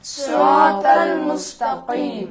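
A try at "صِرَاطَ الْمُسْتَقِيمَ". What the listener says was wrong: कीम नहीं कहेंगे, क्या पढ़ेंगे? सिरातल मुस्तकीम।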